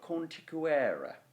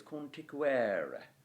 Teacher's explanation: you want to stress it on the penultimate E